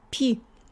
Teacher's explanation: We also have vowel reduction. It's not stressed, so it sounds more like e.